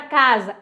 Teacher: O mesmo fonema pode ser figurado por letras diferentes, exatamente como a gente falou logo no início, a palavra casa é com S, mas o som é Z.